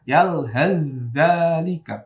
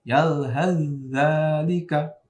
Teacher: Dibaca yalhaz dzalika, langsung ke za tasydid, ya. Taknya melebur ke za, ya.